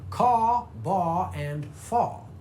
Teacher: for someone who speaks with a traditional southern drawl, that would be caw, baw, and faw, non-rhotic.